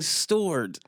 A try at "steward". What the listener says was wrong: It had a more of an OR sound.